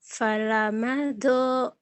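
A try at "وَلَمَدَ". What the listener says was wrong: Wa bukan fa. nggak ada titiknya, bukan do tapi to, Ibu.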